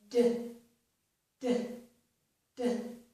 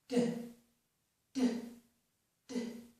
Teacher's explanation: The tip of my tongue is pressing on that ridge behind my upper teeth. And when I do that, I completely stop the air, as I did with the voiceless sound, and then I release that air in a burst. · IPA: / d /